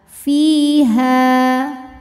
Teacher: Sebab ada alif didahului harokat fathah, maka huruf ha panjang 2 harokat. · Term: mad tabi'i dhahiri